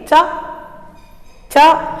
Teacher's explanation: हमारी जीभ का जो आगे का भाग है वो ऊपर तालु को स्पर्श करता है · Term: तालव्य व्यंजन